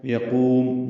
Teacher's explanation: قاف کو پر پڑھنا ہے، لمبا کرنا ہے